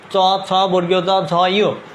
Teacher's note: এই প্রত্যেকটাই তোমার তালুতে লাগতেছে, অর্থাৎ উপরের তালুতে লাগতেছে। এই কারণে এই প্রত্যেকগুলোই হচ্ছে তালব্য ধ্বনি।